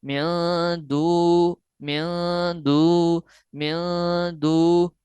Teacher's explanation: نون ساکن کے فوراً بعد جو ہے وہ حروف اخفا جو کہ 15 ہیں، ان میں سے ایک حرف دال آ رہا ہے، اس لیے یہاں ہم اخفا یعنی غنہ کریں گے، نون ساکن کی آواز کو ناک کے بانسے میں چھپا لیں گے